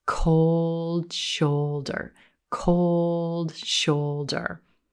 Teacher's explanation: the rowboat O sound is a moving vowel, and as a result, it's a little longer or stretched a little more